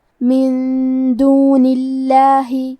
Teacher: کلمت دونی کے آخری میں نون کے نیچے زیر ہے، لہذا ہمیں لفظ الجلالہ مطلب کلمت اللہ کے لام کو پتلی آواز میں پڑھنا ہے